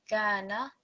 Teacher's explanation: Kaf is joined to Alif Madda. Again, that's our basic elongation, 2 seconds, Madda Asli, Kana.